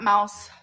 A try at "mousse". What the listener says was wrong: Mousse. That's not mouse. Mouse is one S, babe.